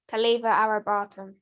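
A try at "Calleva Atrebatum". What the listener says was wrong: No, you can't say Arabatum. You've got to say Atrabatum.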